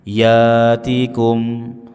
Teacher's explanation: ya hamzah sukun, jangan dibaca mirip alif, jangan dibaca mirip ain. Ya'tikum atau alam ya'tikum, ya bukan ya.